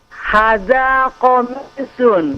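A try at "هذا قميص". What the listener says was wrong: Nah, hanya dipanjangkan.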